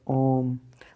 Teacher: लुत स्वर में सिर्फ एक ही स्वर वर्ण आता है और उसके उच्चारण में दीर्घ स्वर से तीन गुना अधिक समय लगता है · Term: प्लुत स्वर